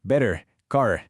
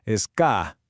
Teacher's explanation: Los lingüistas lo llaman acento no rótico, pero más allá del nombre, lo que importa es entender que este detallito, el no pronunciar la R después de una vocal, es una de las formas más claras de muchos acentos británicos, sobre todo en el sur de Inglaterra.